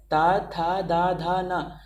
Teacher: गौर से जब बोलेंगे तो पता चलेगा कि ये वर्ग जो है ता वर्ग, इसमें बोलते समय उच्चारण की जगह पे दांत को जीभ जरूर टच करती है। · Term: दंतव्य